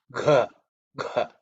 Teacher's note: it's the fourth one in the Ka Varga, so it's Gha, Gha, okay, with aspiration you have to say